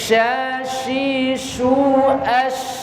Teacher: itu nafasnya di tengah, bukan di ujung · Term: huruf shin